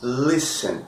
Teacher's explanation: Percebe que a sílaba mais forte é a primeira, o li?